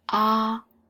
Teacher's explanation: ah is the first tone, higher